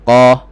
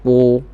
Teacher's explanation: Tebal dan terbuka. Jadi tebal dan terbuka bunyinya qa. Tak boleh bunyi qu, tak boleh bunyi kepung.